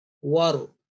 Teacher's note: when there is a ra sakin, and before that is a fatha, in this case, waw, war, so the ra will be thickly pronounced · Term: conditional thick sound